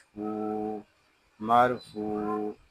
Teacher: میم را زبر مار، فا واو پیش فو، مرفوع۔ فا کو ہم ایک الف تک کھینچ کر پڑھیں گے کیونکہ یہاں واو مدہ ہو رہا ہے